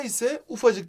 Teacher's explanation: ufacık derken K ünsüzü düşüyor minik de ise minicik derken K ünsüzü düşüyor burada şuna dikkat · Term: Ünsüz düşmesi